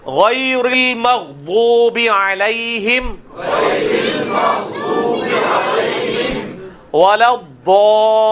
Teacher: ضاد کا ایک مخرج ہے جو میں نے پچھلی دفعہ سکھایا تھا کہ لیفٹ والا جو دانتوں کی جڑ میں آپ نے زبان کی لیفٹ کارنر کو لگانا ہے، ضاد نکلے گا